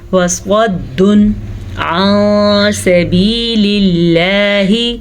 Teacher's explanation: تنوین کے بعد عین حروف ہلکی میں سے ہے تو ہم تنوین کو ظاہر کر کے بغیر غننے کے پڑھیں گے · صاد حروف مستعلیہ میں سے ہے، وہ حروف جو ہمیشہ ہی پر پڑھے جاتے ہیں